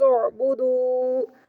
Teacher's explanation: دال کے آگے واو مدہ ہے، 1 سیکنڈ کے لیے لمبا کریں گے